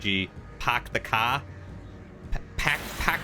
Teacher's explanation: people from cities like Boston drop the r